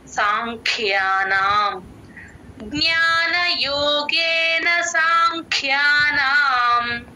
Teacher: క కింద మహాప్రాణము య వత్తు రెండు ఉన్నాయి రెండు వినిపించేటట్టు చెప్పాలి